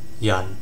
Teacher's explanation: low tone and drops straight down. Uh sounds like a sigh almost. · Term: Fourth tone